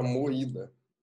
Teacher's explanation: se for ver ela é uma palavra é paroxítonas concorda comigo a força dela tá na penúltima sílaba